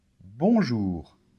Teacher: le r en français se fait ici un peu comme quand tu fais des gargarismes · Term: le r final